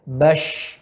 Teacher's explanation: Udara banyak yang keluar. Ya, pita suara terbuka. Dan tenggorokan tidak bergetar. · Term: huruf hamsun